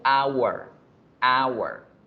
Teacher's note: La palabra hora tiene la letra H, pero al pronunciar la palabra hora yo digo hour, hour. Igual que en español, la H no suena en la palabra hora. Entonces yo no puedo decir a hour.